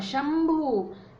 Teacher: ऐसे ही है शंभु, प फ ब भ म, शंभु, ये जो भ है ये प वर्ग का है और इसका पंचम म है, इसलिए अनुस्वार का उच्चारण हुआ म